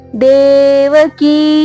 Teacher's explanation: ದೇವಕಿ ಕಿ ದೀರ್ಘ ಇರಲಿ, ಮತ್ತೆ ದೇ ಕೂಡ ದೀರ್ಘ ಇರಲಿ.